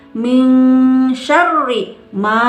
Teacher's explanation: Nun mati menghadapi shin samar, masukkan ke hidung, namanya juga ihfa.